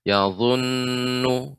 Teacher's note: nun yang bertasydid, ya mim bertasydid, ini baca dengan gunnah yang dipanjangkan